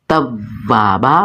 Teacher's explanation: توابا، واو مشدد ہے، واو کو زور دے کے جماؤ کے ساتھ اس کے مخرج سے نکالیں گے یعنی دونوں ہونٹوں کو فل گول کریں گے